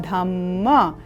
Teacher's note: क्योंकि पद के अंत में हलंत युक्त है इसीलिए अ की अल्प ध्वनि के साथ उच्चारण होगा